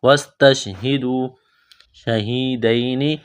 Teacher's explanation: تش، وستش، ہا زیر ہی، وستش ہی، دال واو پیش دو، واو ساکن سے پہلے پیش ہے، حروف مدہ واو ہے، الف کے برابر کھینچنا ہے